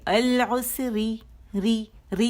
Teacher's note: اپنے سے پہلے لام تعریف کو اتنے ظاہر کر دیا، اور لام تعریف کی وجہ سے حمزۃ الوصل پہ زبر آئے گی اور را باریک پڑھی جائے گی